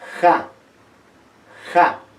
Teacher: Pero también en la variante asureña, como en la variante chanca, esta K se hace más suave, es ja, ja, ya no es K, es ja. Pero en la variante chanca, este fonema postvelar dejó de ser postvelar y se fricativiza. Y es ja, ja. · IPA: /q/